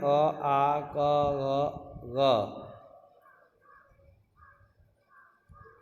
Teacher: कंठ का उच्चारण किसके, इनका उच्चारण गले से होता है